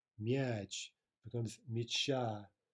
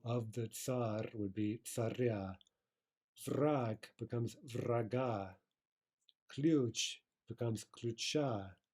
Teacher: So the stress jumps to the ending, and we get kot becoming kata, stol becomes stala in the genitive, мяч becomes мяча in the genitive, tsar becomes tsarya.